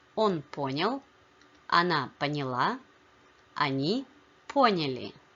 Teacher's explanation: Note that the stress only shifts in the feminine form.